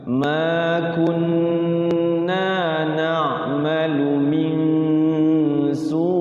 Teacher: Gunahkan dulu maknya kepanjangan, jadinya gunahnya kurang. Makun, jadi gunah itu lebih lama daripada mad tabi'i ya, hitungannya 3 ketukan